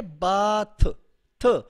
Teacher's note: ये भी डेंटल है और ये वॉइसलेस है क्योंकि वाइब्रेशन कॉज नहीं हो रही